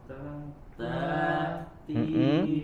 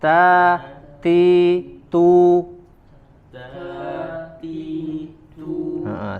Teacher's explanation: Huruf ta juga dia disempurnakan dengan sifat hams, mengeluarkan angin ketika mengucapkannya